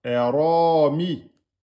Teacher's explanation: Hein, le Ra, ici, il est emphatique. Hein, et en 2 temps.